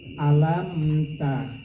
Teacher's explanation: Nah selain dari huruf ba dan mim, seluruhnya itu adalah ijhar syafawi. Tidak usah dipanjangkan, jelas bunyi mimnya itu. · Alam itu tidak usah dilamakan, alam ta. Namanya ijhar syafawi.